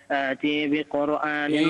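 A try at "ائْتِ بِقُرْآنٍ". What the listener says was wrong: إيتي بقرآن. مش إيتي لا. إيتي بقرآن. كسر. كسر على التاء.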